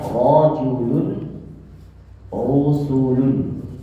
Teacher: Tafkhim ra yang pertama ra dalam keadaan fathah dan dhammah.